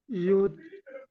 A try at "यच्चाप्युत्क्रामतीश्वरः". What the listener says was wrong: युत नहीं, प्युत, आधा प भी है ना, आधा प भी है, प्युत प्युत, प बोलो ना, प्य प्युत प्युत प्यू, प नहीं आ रहा ना आपका, प नहीं सुनाई दे रहा, आधा प है ना, प्युत।